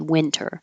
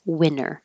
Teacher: Winter can be pronounced with a T, and when you're being careful and speaking more, not formally, but more carefully, then you would keep the T, winter. But with just casual conversation, you will hear people say it without the T, winter. This should be a mild winter, and you will know the difference between winter and winner based on the context of the sentence.